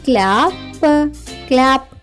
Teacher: పిల్లలు, సిఎల్ యొక్క శబ్దం కాలా కాకుండా క్లా అవుతుంది. కాబట్టి సిఎల్ఏ యొక్క శబ్దం అవుతుంది క్లా.